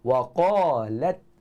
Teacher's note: Bukan betul-betul pada anak tekak tu, tapi hampir dengan anak tekak kedudukan dia, dan dia dibaca dengan tebal atas sifat isti'la yang ada pada huruf qaf tersebut. Dan huruf lam ada sifat istifal yang kita kena baca dengan nipis. Dia tak boleh tebal.